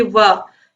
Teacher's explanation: जब आप वाह बोलोगे तो आप देखोगे कि वाह बोलने पर जो आपके निचले होंठ है वो ऊपरी दांतों को स्पर्श कर रहे हैं। तो वह जो है यह इसका उच्चारण स्थान दंतोष्ठ होता है।